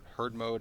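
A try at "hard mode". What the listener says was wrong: The herd mode. You said herd mode, yes. not hard mode.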